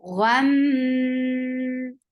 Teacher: Because there is meme with tasdeed, so you are creating akmal gunna, the longest gunna.